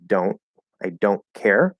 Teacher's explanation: So let's say we stop the T, we'll go into the N and stop the T